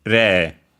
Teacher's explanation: Again, e written as re e I, and so more often than not long e. Re, accented on the first one. So high-low